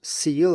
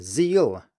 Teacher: the only difference between those two is the voicing of the S at the beginning